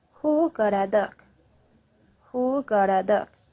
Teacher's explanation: remember the main word in this sentence is dog